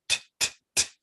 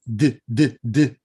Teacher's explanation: A t, t, t, a t sound does not have vocal cord accompaniment, whereas a d, d, d sound does. But if you try those, you'll notice that your tongue and your teeth and all of the rest of the apparatus are doing the same thing.